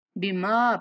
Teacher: بما پڑھتے ہوئے میم کی آواز ناک میں نہیں جانی چاہیے